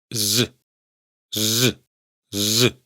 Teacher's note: Estrictamente hablando, sí que se produce ese sonido, aunque la mayoría de hablantes no es consciente de ello, pero esto sería salirnos ya un poco del tema, así que otro día ya hablaremos de ello. Pero en catalán sí que existe la s sonora como fonema, sonido independiente